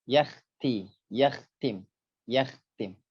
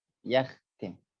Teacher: Kha menghadapi huruf ta, maka sempurnakan tebal kha, jangan terpengaruh oleh tipisnya huruf ta.